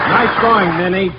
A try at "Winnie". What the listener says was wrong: that's Winnie, not Minnie. Your pronunciation is not clear.